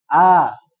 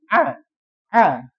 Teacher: A dan A itu adalah satu dua huruf yang pengucapannya sama A dan A cuman berbeda tempat saja. Kalau a Hamzah itu berada di mana? Pangkal tenggorokan paling bawah. Kalau ain tenggorokan tengah. Tengah ya. Jadi sedikit berbeda sebetulnya cuman keluar suaranya itu sama A dan A.